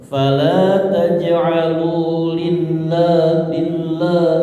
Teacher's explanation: Lilnya tipisnya pada lilnya ya. Tapi lahnya tetap tebal. Lafaz Allah tetap tebal ya.